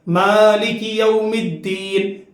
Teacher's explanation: میم الف زبر ما، تھوڑا کھینچنا. ہم کھینچتے ہیں، ملک نہیں پڑھتے، ہم تھوڑا کھینچ کے پڑھتے ہیں